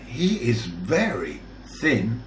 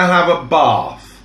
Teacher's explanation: the unvoiced where the tip of the tongue is extended just outside the mouth